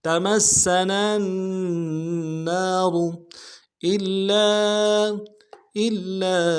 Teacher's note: حمزہ کو لام کے ساتھ ملانا ہے، لام کے اوپر تشدید زور دیں گے